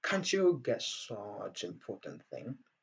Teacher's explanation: Can't you get such important thing? Donc, entre can't et you, nous avons donc l'assimilation qui va nous donner le son ch.